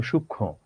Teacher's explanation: উচ্চারণটা আসলে সূক্ষ্ম, একটু অনুনাসিক বা একটু নাক আসবে।